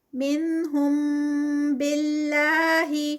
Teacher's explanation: منہم باللہ، لفظ جلالہ اور اس سے پہلے با کے نیچے زیر ہے، تو اللہ کا جو لفظ جلالہ نام ہے، اللہ کا نام لفظ جلالہ اس کو کہتے ہیں، یہ لائٹ پڑھا جائے گا، یہ ہیوی نہیں ہوگا۔ اگر اس سے پہلے زبر ہوتی تو ہم ہیوی ادا کرتے اس کو، اور ساتھ میں 2 کاؤنٹس کا یہاں پر سٹریچ بھی ہوتا ہے۔